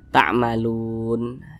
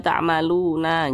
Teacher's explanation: Jangan dibaca ta'maluna, jangan, tapi huruf nun kita sukunkan